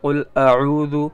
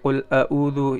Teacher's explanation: یعنی عین کی جگہ حمزہ پڑھ دے